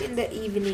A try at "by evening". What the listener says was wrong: In the evening. I told you, read the word carefully. Look at it. by लिखा हुआ है, आप पढ़ रहे हो, in पढ़ रहे हो. That's wrong ना? Read it again.